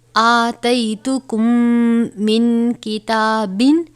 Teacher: ادغام شفوی ہو رہا ہے کیونکہ میم ساکن کے بعد دوسری میم آئی ہے